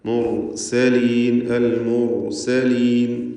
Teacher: മുർസലീൻ സീന് സ്വാദായി പോവാതെ അതും ശ്രദ്ധിക്കേണ്ടതാണ്